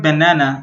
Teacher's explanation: The first and last syllables have the schwa.